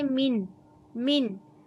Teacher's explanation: नून की आवाज़ को ज़ाहिर करेंगे, इसमें यानी गुन्ना वगैरह नहीं होगा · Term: इजहार